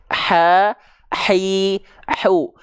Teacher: ha kecil tepat dari bagian tengah tenggorokan karakteristik nafasnya nafas yang berbisik ha hi hu jangan sampai terlalu ke bawah